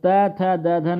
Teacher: और त थ द धन क्या होते हैं दंत ध्वनियां होती हैं